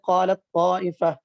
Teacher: قالت طائفہ میں تا اور طا کا مخرج ایک ہے لیکن صفات میں فرق ہے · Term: متجانسین